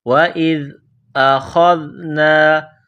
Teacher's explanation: حمزہ کو زال کے ساتھ ملانا ہے، زال کو باریک کرنا ہے